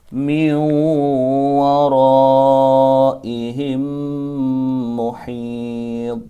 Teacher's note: Dengan cara baca bukan muhitun, tapi karena dia waqaf harus dibaca sukun atau mati karena waqaf. Dengan cara baca qalqalahnya dipantulkan huruf dha-nya karena huruf dha ini adalah termasuk huruf qalqalah. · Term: qalqalah kubra